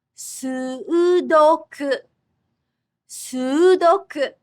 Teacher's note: in Japanese, there's a double vowel, so it's 4 syllables.